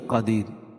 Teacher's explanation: قدیر وقف کی صورت میں یہ را باریک پڑی جائے گی ، کیوں؟ اس لیے کہ را ساکن سے پہلے یا ساکن